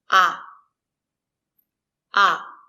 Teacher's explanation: it's open ah open your mouth and your tongue is down